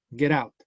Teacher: El verbo es lo más importante, la preposición baja de volumen. Get out. Entonces, get out, se une.